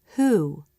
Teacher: Again, there's nothing to see at the beginning of this word. The H sound happens without changing what the lips do for the next sound, the oo as in boo vowel. This sound is most common at the beginning of a word and never occurs at the end of a word in American English, but the letter H does.